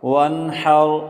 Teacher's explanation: نون ساکن پر غنہ نہیں ہوگا کیونکہ آگے حروف حلقی میں سے حا ہے۔